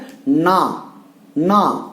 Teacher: அந்த மேல்வாய் அன்னத்தினுடைய முன்பகுதியை தொடணும் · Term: நகரம்